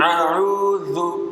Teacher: Huruf zal keluar dari ujung lidah dengan 2 gigi seri atas.